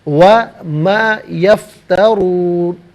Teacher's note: را پر پیش ہے، را کو پر کر کے پڑھا جائے گا۔